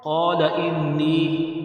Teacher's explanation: قَالَ إِنِّي، مد منفصل ہے اور نون مشدد ہے تو نون مشدد میں غنہ کرنا ہے۔ نون کے نیچے زیر ہے، یا ساکن ہے، نون یا ساکن سے پہلے اگر زیر ہو تو یا مدہ ہوتا ہے، لہٰذا اس کو ایک الف کی مقدار کھینچ کر بھی پڑھنا ہے